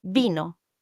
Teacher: The i is pronounced as e like in the English word machine. It's a pure sound unlike the variety you have in English pronunciation of the I.